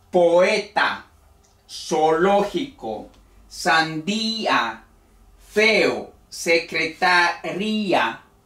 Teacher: hay una vocal débil y una fuerte pero no se pronuncia en un solo golpe como en el diptongo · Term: el yato